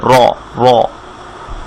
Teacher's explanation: রর উপর ফাতহা হলে আমরা বলেছি সেটা মোটা হবে, রটা মোটা হবে